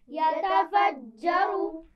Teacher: جیم پر تشدید ہے تو سختی سے پڑھیں گے اور اس میں را کو موٹا پڑھنا ہے